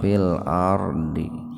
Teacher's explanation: Fil tafhim. Ro sukun didahului fathah. Jadi ro-nya dibaca tebal